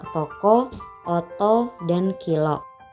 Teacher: Pada O huruf kecil, vokal O-nya itu terbuka.